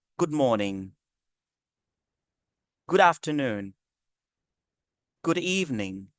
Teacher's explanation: l'expression good morning, good afternoon ou good evening, ça descend un peu, ça descend légèrement